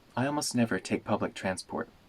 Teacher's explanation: we can also make the last T in transport into a glottal stop